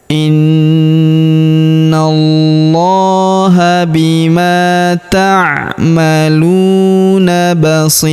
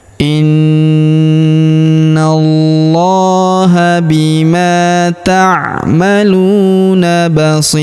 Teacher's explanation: Huruf si kita panjangkan 2, 4 atau 6 harokat karena di depan huruf si terdapat ya sukun sebelum huruf pemberhentian, dan huruf pemberhentian huruf run tanwin un kita sukunkan atau kita matikan ya.